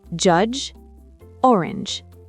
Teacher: et le son du imaginez un petit D avant le J, c'est très dynamique.